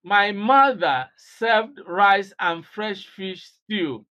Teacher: This stress is on mother.